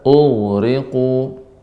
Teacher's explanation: Ya, pada kata ughriqu, ghain, ya, ini makhrajnya kan tenggorokan bagian atas, ya. Kemudian sifatnya adalah rokhawah, mengalir.